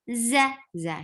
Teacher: Za, short, and there is buzzing sound in za